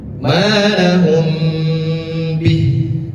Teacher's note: Mim sukun bertemu dengan ba, maka hukumnya adalah ikhfa syafawi. Bacanya adalah, cara membacanya ditahan terlebih dahulu.